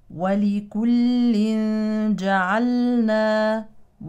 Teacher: هذا التنوين يليه جيم اذا تخفى نون التنوين الساكنه اخفاء حقيقي